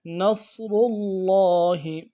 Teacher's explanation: جاء نصر اللہ، نصر اللہ، صاد کو موٹا ادا کرنا ہے، موٹا حرف ہے، صاد کی سیٹی موٹی ہوگی، را کو موٹا ادا کرنا ہے اور لام کے ساتھ ملانا ہے۔ لام کے اوپر تشدید ہے، زور دینا ہے، کھڑا زبر ہے، ایک الف مقدار میں کھینچنا ہے۔ نصر اللہ، اور جو ہا ہے لفظ اللہ کی ہا کو نرمی سے ادا کرنا ہے، لا نصر اللہ ہی پڑھتے ہیں، ہی نہیں پڑھنا۔